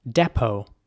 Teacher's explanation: the e at the beginning is pronounced like a ä sound depot and the t at the end is silent